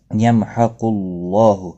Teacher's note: اللہ کا لام پیش کی وجہ سے پر پڑا جائے گا